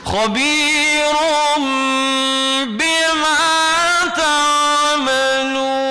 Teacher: Let your lips touch. Lips touch. Make ikhfa shafwi.